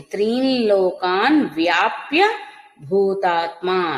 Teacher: వ్యాప్య భూతాత్మ త్రి తర్వాత అనుస్వారం సున్నా ఉంది తర్వాత లకారం ఉంది కాబట్టి అనుస్వార ఉచ్చారణ కూడా నాసిక ద్వారా లకారం అవుతుంది